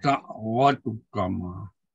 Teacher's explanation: ta ini dengan dal sama tempat keluar, tetapi dia tak sama dari segi sifat. Jadi ujibat da'wa maka hukumnya idgham mutajanisain.